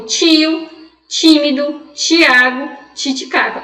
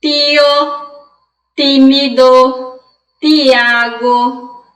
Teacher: Olha o quanto a gente chia para pronunciar essas palavras.